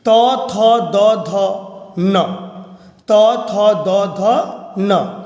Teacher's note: न का उच्चारण स्थान दंत होता है